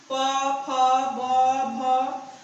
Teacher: यह द्वयोष्ठ इसलिए कहते हैं कि दोनों होंठ चिपक करके इस वर्ग का उच्चारण होता है इस वर्णों का, इसलिए इसे द्वयोष्ठ व्यंजन कहते हैं।